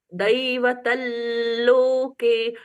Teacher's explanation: अनुस्वार का ल जैसा उच्चारण हुआ